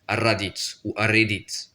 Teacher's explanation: le R qui est roulé, et selon si on l'écrit une fois ou deux fois, il faut le prononcer court ou long. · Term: double R